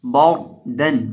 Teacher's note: را ساکن ہے اور را ساکن سے پہلے زبر ہے تو اسے ہم پر کریں گے. اس کو پڑھیں گے بار دن، موٹا کر کے بار دن.